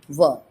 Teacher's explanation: अब वकारस्य दंतोष्ठम, यानी कि जो व है इसको दंत और ओष्ठ से बोला जाता है